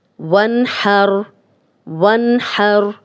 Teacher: وانحر نون ساکن جزم والا نون، آگے ہا آ گیا، ہم غنہ نہیں کر رہے۔